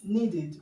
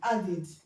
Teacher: When you have a regular verb that ends in t or d, the past tense marker is going to be pronounced as id.